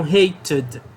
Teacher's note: hate teve uma terminação do som de T, então vou usar o som de id